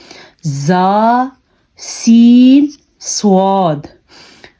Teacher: निकलते हैं सीटी वाले हरूफ तीन होते हैं ज सीन सद इनको अदा करते हुए हमारे मुंह से सीटी की आवाज आ रही है